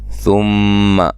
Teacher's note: میم مشدد پہ غنہ ضروری ہے